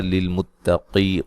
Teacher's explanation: نون مشدد پہ غنہ ضروری ہے۔ للمتقی قاف کو موٹا ادا کریں گے، یا مدہ ہے۔